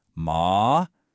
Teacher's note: The first tone is high in level.